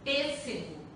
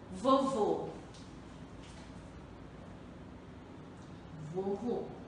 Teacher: a vogal E e a vogal O apresentam som fechado